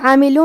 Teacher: حرف العین کو ہم حلق کے درمیان والے حصے سے پڑھیں گے، اور کیونکہ اس پہ زبر ہے، میم کے نیچے زیر ہے، پھر لام پہ پیش ہے تو ہم یہ تینوں حرکات کو ظاہر کریں گے.